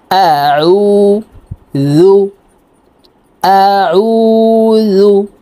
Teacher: আইন হরফ হলকের মধ্যখান থেকে চাপ দিয়ে উচ্চারণ করতে হবে, কারণ আইনের মাখরাজ হলকের মধ্যখান থেকে হবে।